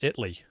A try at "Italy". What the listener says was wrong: Not Italy. Italy. It's 2 syllables, not 3.